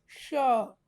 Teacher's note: हमारी जीभ जो है मुंह के तालू से सटता है, ऊपर ऊपर सटा के हम श बोलेंगे।